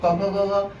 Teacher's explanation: क वर्ग का उच्चारण स्थान कहाँ से है, कंठ से